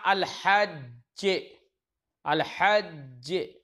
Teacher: ایسے ہم نے کہا الحج، الحج، ہے نا، تو الحج میں آخر میں دیکھو دو جیم آ رہی ہیں نا، پہلی جیم ساکن ہے دوسری جیم متحرک ہے، تو پہلی جیم کا دوسری جیم میں ادغام کر دیا اور مشدد پڑھ دیتے ہیں، تشدید لگا دیتے ہیں، الحج، ہے نا۔